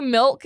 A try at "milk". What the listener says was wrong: right now, when you said milk, you forced the I.